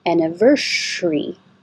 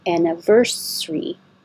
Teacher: this s can be a sh sound or a s sound